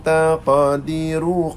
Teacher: qaf itu qaf qalqalah sughra, dia duduk di pertengahan